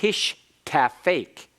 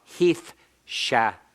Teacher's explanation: It's just you're switching places with the sibilant and the tau, and in this case, the tau changed to a taith. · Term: metathesis